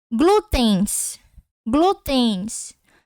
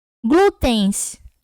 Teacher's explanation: Tá vendo que o N, ele vai ter o som de I?